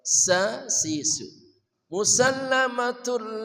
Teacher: sa sisu, dari ujung lidah bersama gigi seri bawah